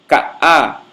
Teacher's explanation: essa pausa que fica entre o A e o E é a realização dessa oclusão glotal. Você dá uma ligeira fechada na glote que produz essa pausa. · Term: consoante oclusiva glotal